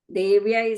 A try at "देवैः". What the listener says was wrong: Second line, first word, devai. I think second time you said devyai, it says devais. It's the dya sound, but if you're not able to say the dya together, you can break it into a it and a ya, okay?